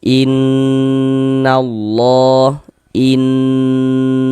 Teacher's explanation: Jadi di bagian in-nya itu suaranya itu kita tahan, kita panjangkan sejenak. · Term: gunnah musyaddadah